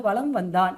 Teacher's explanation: மகர மெய்யே அடுத்து வகரம் வரும்போது மகரமை தனக்குரிய அரை மாத்திரையிலிருந்து குறைந்து கால் மாத்திரை அளவு ஒளிக்கும். அததான் நம்ம என்ன சொல்லுவோம்னா மகர குறுக்கம்னு சொல்லுவோம்.